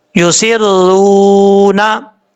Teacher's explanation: युसिर्रू, रा के बाद वाव है, वाव साकिन से पहले पेश तो वाव मद्दा होता है, एक अलिफ की मिकदार लंबा करके पढ़ेंगे